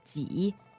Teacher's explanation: remember, 几 is third tone. That's right. Go down and up. 几 Yeah, especially down, go low.